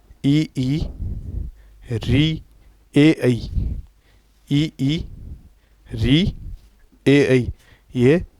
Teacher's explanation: इन स्वरों के उच्चारण में जीवा का अग्र भाग सक्रिय रहता है। अर्थात जीवा कुछ आगे सरक जाती है। जीवाग्रह थोड़ा सा उठा रहता है। · अग्र स्वर है जो जीवा के अग्र भाग से बोले जाते हैं। दांतों के आगे टच होती है या छुपती हुई वायु को बाहर निकालती हैं।